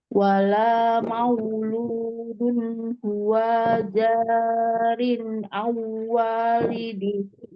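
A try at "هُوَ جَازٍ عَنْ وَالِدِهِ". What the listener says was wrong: Ya, itu huruf zaimi, bukan huruf ro, jadi jazin.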